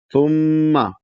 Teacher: ثم یہاں پر بھی ثم میں میم مشدد ہے تو یہاں غنہ ہوگا اور غنہ کی آواز کو ناک میں 2 حرف کے برابر کھینچ کے رکھیں گے، ایک حرف سے 2 حرف کے برابر.